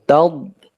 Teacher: dad huruf tebal atau huruf isti'la, maka diucapkan dengan rahang yang jauh, taub, tetapi nafasnya betul-betul tertahan, udara tertahan, suara pun tertahan, taub, ya.